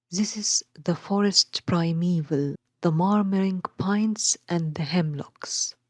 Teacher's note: He used the dactylic foot, which consists of 1 stressed syllable followed by 2 unstressed syllables.